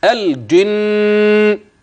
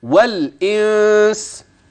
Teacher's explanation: الاولى اقوى في السماع واوضح للنون اما الثانيه النون مخف والغنه هي الواضحه اكثر